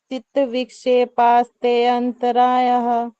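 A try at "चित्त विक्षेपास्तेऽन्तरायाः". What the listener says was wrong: चित्त विक्षेपास्तेन्तराय। हाँ अब विक्षेपास्ते के बाद आप ऐ नहीं बोलेंगे विक्षेपास्तेन तेन। ठीक है ते के बाद सीधा ना तेन्तराय ऐसे बोलेंगे इसको विक्षेपास्तेन्तराय।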